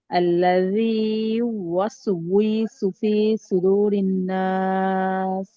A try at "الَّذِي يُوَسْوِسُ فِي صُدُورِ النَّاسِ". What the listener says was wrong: একটা হয়ে যাচ্ছে না? আল্লাযী ইউওয়াসবিসু। হ্যাঁ, উইসু মানে মানে ওয়াওটাকে একটু বেশি গাঢ় ভাবে বলা হচ্ছে, হ্যাঁ।